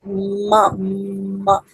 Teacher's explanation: Because what happens that when we make the sound, bilabial sound like ma, ma, then what happens that all the air goes to the nose, and then the air flows through the nose